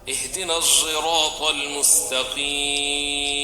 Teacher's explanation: ada suara za di dalam huruf shad. Jadi dibacanya menjadi ihdinas siratal mustaqim. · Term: ismam shad bi sauti zai